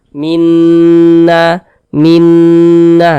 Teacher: karena dia gunah maka cara membacanya itu digunahkan jadi suaranya itu kita tahan kita panjangkan sejenak Minna Minna kita dengungkan kita gunahkan Minna na dibaca panjang nah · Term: gunah musyaddadah